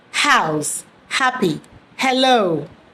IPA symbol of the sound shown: h